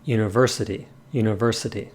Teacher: we hit the ver on our mental keyboard so to speak we hit the ver with more force than the other notes consequently the volume for ver increases as well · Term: stress accent